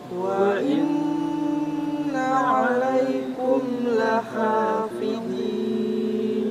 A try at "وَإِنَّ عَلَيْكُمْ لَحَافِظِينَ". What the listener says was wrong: Perhatikan saya, yang pertama وَإِنَّ, hamzah ketika di tengah harus jelas, bukan وَإِن وَإِن, tapi وَإِنَّ. Yang kedua عَلَيْكُمْ, dengan menyempurnakan huruf kaf harakat dhammah ku, kun ditarik, bukan kun atau kun, belum sempurna ya.